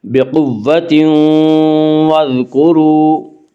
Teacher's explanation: وا مدہ کو 1 الف کے برابر کھینچ کر پڑھیں گے